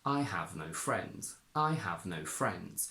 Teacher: We have three content words that need to be stressed. Have, no, friends.